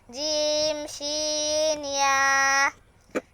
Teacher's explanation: ৬ নম্বর মাখরাজ, জিহ্বার মধ্যখান তার বরাবর উপরের তালুর সঙ্গে লাগাইয়া